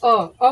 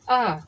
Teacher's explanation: अ बोलने में टाइम नहीं लग रहा है। अगर हमको बोलने का आ तो आ में टाइम यानी कि खींच कर बोला ज्यादा यानी ज्यादा समय लग रहा है। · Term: ह्रस्व मूल स्वर